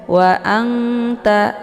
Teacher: nunnya disamarkan sambil ditahan, ya, sehingga terbentuk suara yang mendengung tapi sedikit. Nun sukun yang bertemu dengan huruf ta ini dinamakan dengan ikhfa aqrab.